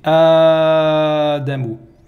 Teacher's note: Alors ici on voit que Adamu, ça commence par une hamza. Et donc le son A, il y a des gens qui préfèrent le prolonger